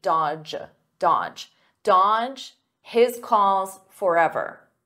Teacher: Notice here the D is silent, the middle D